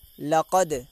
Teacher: دال حرف قلقلہ میں سے ہے تو اس کی آواز بھی لوگ ٹکر کھا کے واپس آئے گی